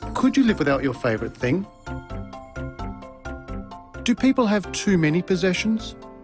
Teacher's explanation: Rising intonation patterns are used for these questions. Did you notice the pitch of his voice rise at the end of the questions?